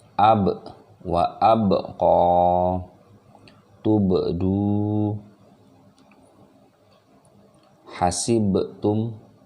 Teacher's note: Karena ini ba yang disukunkan atau dimatikan, dan ba juga merupakan huruf qalqalah, jadi dia wajib untuk dipantulkan.